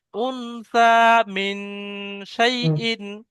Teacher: যে নুন সাকিনের পরে হরফে ইকফা 15টির মধ্যে সা এসছে, তাই এই নুনটাকে 1 আলিফ পরিমাণ গুণনা করে পড়তে হবে, একে ইকফা বলা হয়।